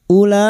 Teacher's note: bertemunya mad dengan hamzah dalam satu kalimat mad wajib muttasil lima harakat kita panjangkan